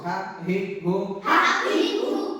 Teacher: লম্বা হা উচ্চারণে গলার মধ্যে শোষ করে শব্দ হবে